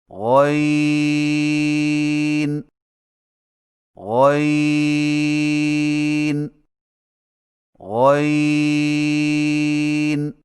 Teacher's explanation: غین کی ادائیگی میں زبان کی جڑ کو تالو کی طرف بلند کرتے ہوئے موٹی آواز میں پڑھیں